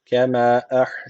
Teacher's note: Allah lafzı kalın okuyacak çünkü öncesi tekrar üstten bağlanıyor.